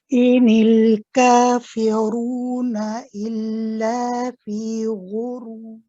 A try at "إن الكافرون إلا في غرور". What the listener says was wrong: Because you're getting ready for your ra here, the fa is being cut a little bit short, so I'm not hearing the completeness of the e, the fi. So I heard fe, so we'll try that one more time.